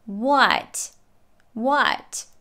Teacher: she's yelling what it's a question so her pitch goes up she pronounces it with a true t at the end and the a is pronounced as the schwa